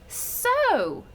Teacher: So is an open syllable. So it has the long O.